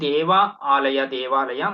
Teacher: ಇಲ್ಲಿ ಅ ಮತ್ತೆ ಅ ರಸ್ವ ಮತ್ತೆ ದೀರ್ಘ ಸೇರಿ ದೀರ್ಘ ಬಂದಿದೆ